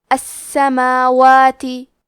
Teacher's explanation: کلمت السماوات میں حرف سین پہ تشدید ہے، لہذا ہمیں 2 حرف کے برابر سین کو پڑھنا ہے، کیونکہ تشدید کی اصلیت 2 حرف ہے.